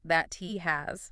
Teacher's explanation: You put your tongue up for the T, but you don't release the puff of air, so it's very short. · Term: stopped T